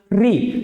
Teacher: जीभ जो है आगे वाले ऊपर के दांतों के पीछे वाले हिस्से में टच होती है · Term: मूर्धन्य स्वर